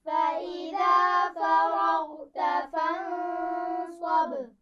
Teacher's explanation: غین پر قلقلہ نہیں ہونا چاہیے